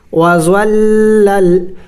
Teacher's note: شد ہے لام کے اوپر، تو لام کو 2 مرتبہ پڑھیں گے، ایک بار ضا کے ساتھ ملا کے، ضا لام زبر زول.